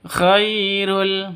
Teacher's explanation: Khai sifat lentur, lemes, tidak boleh disentak, tidak boleh didengungkan, tidak boleh panjangkan.